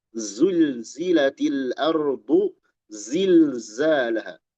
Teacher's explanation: Huruf zai itu ada desis, pecah semua.